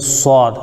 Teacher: صاد کو ادا کرنے میں سیٹی بھی نکالنا ہے اور اس کو پر بھی پڑھنا ہے، موٹا پڑھنا ہے، جیسے صاد۔ اور موٹا پڑھنے کا طریقہ وہی ہے کہ زبان اگر ہماری سیدھی ہے تو اس کو تھوڑا کٹورا نما بنا دیں گے، وہ حروف پر ہو جاتے ہیں، موٹے ہو جاتے ہیں۔